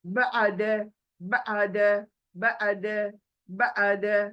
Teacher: अभी देखिए ये आइन साकिन, ये साकिन आइन को हलक में आना चाहिए, सुनाई देना चाहिए